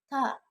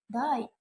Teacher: These consonant sounds are made when the tongue tip contacts the alveolar ridge, the gums just behind the teeth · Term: Alveolar sounds